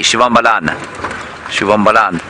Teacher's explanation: it sounds like you've ended on the end, but there's actually a very slight A